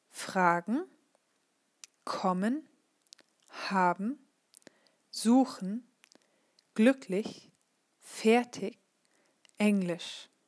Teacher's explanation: accent on the stem, that means here is the accent on the first syllable